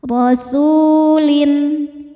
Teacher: Ro dibaca tafkhim karena berharokat fathah, maka ro-nya tebal.